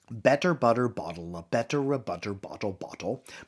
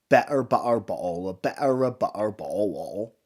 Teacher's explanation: drop the T off and just use your glottis, so saying it like better butter ball, a better a butter ball.